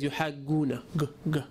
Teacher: So the reason why they pronounce it like this is because they used the end, the rear of the tongue, rather than the middle of the tongue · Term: Cairo jim